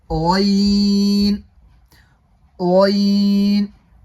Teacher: غین کا مخرج ہے حلق کا شروع، یعنی منہ کی طرف والا حصہ۔ جو مخرج خا کا تھا حلق کا شروع یعنی منہ کی طرف والا حصہ، وہی مخرج غین کا بھی ہے، حلق کا شروع یعنی منہ کی طرف والا حصہ۔